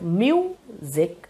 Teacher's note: when you say the word music, you stress on mu, because music is a noun